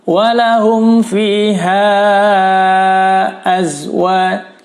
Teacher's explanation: mim sukun bertemu fa, hukumnya adalah izhar syafawi ya, dibaca jelas, jangan ditahan.